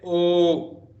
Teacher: You use your lips and the throat, but the sound becomes oo in between. So there's oo, and so ma becomes om. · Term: Kantha oshta